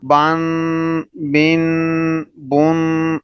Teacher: اور اسی طرح تنوین کے متعلق آپ نے پڑھا ہے کہ جب تنوین کو پڑھنا ہے تو وہاں اخفا کرنا ہے، با دو زبر بن، با دو زیر بن، با دو پیش بن، بن بن بن۔ یہ جو ناک میں آواز آ رہی ہے، آواز کو ناک میں چھپایا جا رہا ہے، اس کو اخفا کہتے ہیں، اور تنوین کے اندر اخفا کرنا ضروری ہے۔